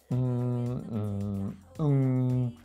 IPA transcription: m, n and ŋ